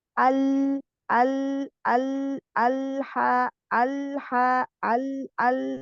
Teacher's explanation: dirasakan dia lari eh ke pinggir ke gigi-gigi samping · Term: lam sukun